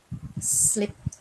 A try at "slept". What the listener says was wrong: Slept bacanya. Ya. Slept. Ada T-nya. Slept. Coba dibaca. Dibaca full.